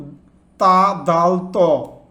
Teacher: জিবার অগ্রভাগ এবং সামান্য উপরে দাঁতের গোড়া এখান থেকে উচ্চারিত হয়